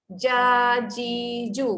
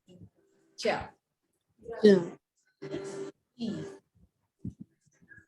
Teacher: untuk huruf jim sebenarnya lidah anda tengah-tengah tu naik ke atas.